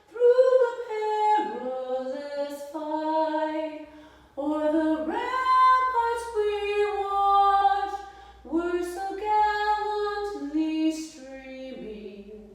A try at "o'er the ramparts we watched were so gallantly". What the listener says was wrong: it a little higher. you need to open your mouth more there.